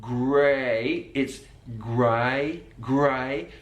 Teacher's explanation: that diphthong changes from grey, A, to I, totally different sound